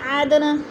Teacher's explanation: دال ساکن ہے، حروف قلقلہ میں سے ہے اور ہلا کر پڑھیں گے